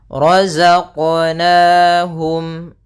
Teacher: ra tebal yaitu ra tafkhim ditandai dengan ra yang berharakat fathah. Kemudian za, sempurnakan za ya, za.